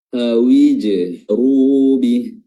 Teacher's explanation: Tadi kita sudah bahas qalqalah pada huruf jim, yang dimana huruf jim ini makhrajnya adalah wasatul lisan, diangkat dan bertemu dengan langit-langit atas